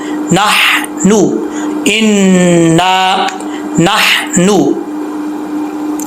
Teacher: इन्ना नहनु, यहाँ पे नहनु नहीं पढ़ना, यहाँ पे हा बरीक है। इस हा का ताल्लुक हल्क से है, सीने की तरफ नहीं है। ये वो हा है जो अलिफ बा ता सा जीम के बाद जो आती है हा, कायदे के फर्स्ट पेज पे हा हा, तो इसको बरीक पढ़ना है क्लियर साउंड के साथ, भारी आवाज़ के साथ इसको नहीं पढ़ना।